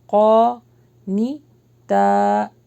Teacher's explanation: یہاں پہ اخفا ہوگا لیکن بھاری کیونکہ آگے قاف آ رہا ہے